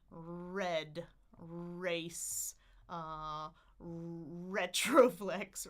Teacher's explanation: a regular R, we call it a retroflex R, meaning the tip of your tongue is curled, right? So red, race, retroflex, I'm curling the tip of my tongue.